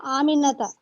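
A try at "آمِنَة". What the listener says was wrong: आमिना। मैंने last class में बताया था कि अरबी में जब लास्ट हरका होती है तो उस पे स्टॉप किया जाता है, उसकी हरका नहीं पड़ी जाती।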